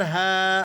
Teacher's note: ہا کے بعد الف ہے تو ہم ذرا اسے کھینچ کر پڑھیں گے